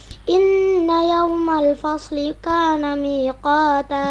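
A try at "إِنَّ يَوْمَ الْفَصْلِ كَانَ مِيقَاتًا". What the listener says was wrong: Ya, sekali lagi penekanannya di situ kurang. Inna yau tidak yaumal tapi yau ya, terasa sehingga ini karena gerakannya kedua bibir ketika mencucu. Yaumal fasli kana miqata. Jadi terasa kalau bacanya inna yaumal fasli kana miqata, ringan ya. Harusnya inna yaumal fasli kana miqata. Nah, itu lebih ditekankan lagi.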